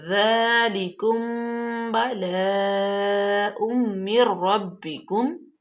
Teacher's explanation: میم ساکن کے بعد با، تو یہ ہوگا اخفاء شفوی، یہاں پہ غنہ کریں گے۔